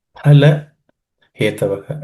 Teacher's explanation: the first letter in that word is aspirated. Because the second letter in the per vargo, per class of consonants.